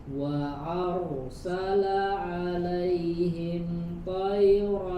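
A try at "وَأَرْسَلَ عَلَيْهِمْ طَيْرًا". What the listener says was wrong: To-nya tebal. To alaihim tayran.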